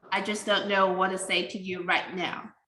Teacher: It skip it, what to say is very fast, and it skip the T.